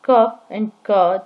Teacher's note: When we make the sound k and k, the tongue is in contact with the lower side of the velum and we call these velar consonants